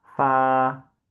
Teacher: we have to say fa like our like lower lips touch the upper teeth and we say fa.